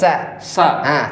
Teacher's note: Sinya jangan ikut tebal.